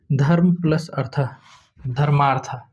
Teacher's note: जैसे में धर्म प्लस अर्थ धर्मार्थ इसमें क्या हुआ है कि अ है इसका जो धर्म में अ छुपा हुआ है उसका अ है अर्थ में भी अ है आ हो गया है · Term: दीर्घ